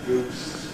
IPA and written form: gʉːs (goose)